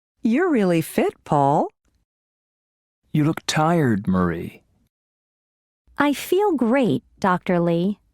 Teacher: There is usually falling intonation and a pause before the name. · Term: Intonation with direct address